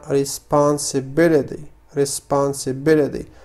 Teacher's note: فهنا نفس الشيء، تلاحظون أنني قلت the responsibility فقمت بنطق تي على شكل دي. أنا أتكلم American accent، ولكن كما قلت يمكنكم القول responsibility ويكون النطق صحيح وبدون أي مشاكل.